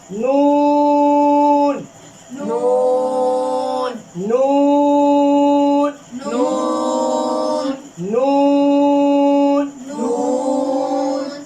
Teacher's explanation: जबान के किनारे, जुबान के किनारे, ऊपर दांतों के ऊपर दांतों के मसूरों से अदा होते हैं · बारीक है। इसको कितना लंबा करना है? 3 या 5 अलिफ।